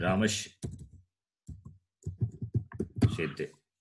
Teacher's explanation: Sakara should be replaced by the following Shakara.